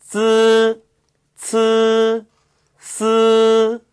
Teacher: 예, 이 3개의 앞 혀끝 소리는요, 표기를 할 때 뒤를 보면, 쯔, 스, 스 뒤에 있는 이가 단음모 이가 아니라 앞 혀끝 소리예요. 그래서 으에 가깝게 발음하셔야 되지, 이에 가깝게 발음하시면 틀린다는 거 주의하셔야 돼요.